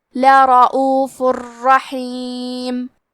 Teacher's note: کلمت لرعوف میں حرف الراء پہ زبر ہے تو ہم حرف الراء کو موٹی آواز میں پڑھیں گے. فا پہ تنوین پیش ہے پھر حرف الراء آتا ہے. · کلمت رحیم را حروف الادغام بغیر غنہ میں سے ہے تو ہم تنوین کو را میں ملا کے بغیر غنہ سے لیکن تشدید کے ساتھ یہ حکم کو ادا کریں گے